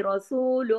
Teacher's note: را موٹا پڑھا جائے گا زبر کی وجہ سے